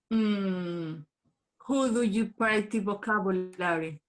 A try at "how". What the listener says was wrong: Se pronuncia how. How, who, las mismas letras, pero en una orden diferente.